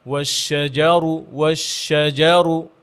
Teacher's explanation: ওয়াশজারু যেন জিমের মধ্যে একটা তাজদিদ ভাব চলে না আসে, কলকলা না চলে আসে, যেমন ওয়াশজারু এরকম না।